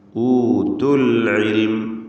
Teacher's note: തുടരെയായി രണ്ട് സുക്കൂനുകൾ വരുമ്പോൾ അതിൻറെ പരിഹാരമായി കാണും അതിൻറെ പരിഹാരമായി കൊണ്ട് ഇവിടെ ദീർഘാക്ഷരമായ വാവിനെ ഉച്ചാരണത്തിൽ നിന്നും കളയുകയാണ് ഊതു എന്ന് ചേർത്ത് വായിക്കുമ്പോൾ പറയുകയില്ല മറിച്ച് ഊത്തുൽ ഇൽമ് എന്ന് പറയും അഥവാ